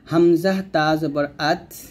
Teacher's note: তা, দাল, ত, এই তিনটা হরফ জিহ্বার আগা সামনের উপরে দুইটাতে গোড়ার সঙ্গে লাগবে। হামজা তা জবর আত এরকম, তাটা এখানে বাতাস বের করবেন, আত, আত এরকম ভাবে।